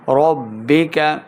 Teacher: را کو پر پڑھیں گے، با مشدد کے سامنے لانا ہے، کاف کو موٹا نہیں کریں گے